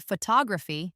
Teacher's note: in the word photography, the stress is on the second syllable